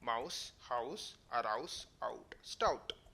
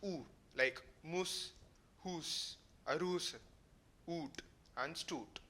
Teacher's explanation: the vowel oo became a diphthong ow